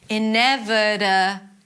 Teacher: Ineve, it's a V sound and a schwa. Ineve, de, that's a flap T, so it sounds like a D.